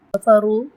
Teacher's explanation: را پیش ہے اور اس کو تفخیم کریں گے، موٹا پڑھیں گے